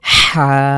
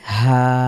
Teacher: তবে এটা কন্ঠের মাঝখান থেকে চাপ দিয়ে উচ্চারিত হবে হা আর এটা আমরা স্বাভাবিকভাবে হা বুক থেকে উচ্চারিত হবে এটি হল পার্থক্য অনেকে এটাকে বড় হা ছোট হা বলে চেনার চেষ্টা করেন যেভাবেই হোক একটি হলো কন্ঠ থেকে আরেকটি হলো স্বাভাবিকভাবে আপনার বুক থেকে বা ভেতর থেকে